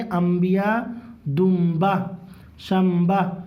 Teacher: नून साकिन के बाद अगर बा आ जाएगा तो मीम से बदल के पढ़ेंगे · نون ساکن کے بعد اگر با آ جائے گا تو میم سے بدل کے پڑھیں گے